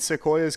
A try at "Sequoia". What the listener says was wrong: You just said Sequoias.